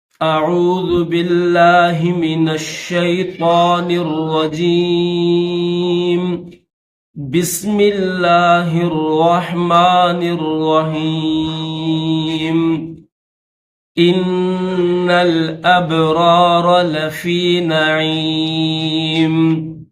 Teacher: ان دونوں آیتوں میں نون مشدد ہے، تو نون مشدد جہاں پر بھی آئے گا تو اس پر ہمیشہ غنہ کیا جائے گا